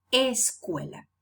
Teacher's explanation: in Spanish it's not possible to have these two sounds initially in a word we need an extra sound before in this case the vowel a escuela because that's how the patterning of sounds functions in Spanish